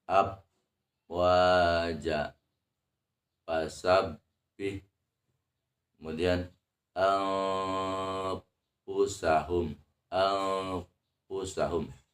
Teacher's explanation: kesalahan umum dalam membaca makhraj Fa adalah yang pertama menempelkan dua bibir jadi tidak boleh dua bibirnya ditempelkan